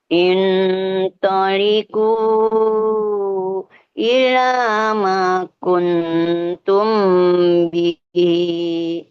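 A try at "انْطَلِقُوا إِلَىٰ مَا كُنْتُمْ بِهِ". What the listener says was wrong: Bihi, agak naik sedikit. Bihi.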